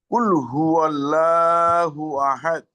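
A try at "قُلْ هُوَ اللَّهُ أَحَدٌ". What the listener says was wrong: আমি তো তেলাওয়াতের শুরুতে বলেছিলাম যে আল্লাহ শব্দের লামের আগে জবর থাকলে এটা লা পড়া যায় না, এটাকে ল পড়তে হয়। কুল হুয়াল্লাহ পড়তে হয়।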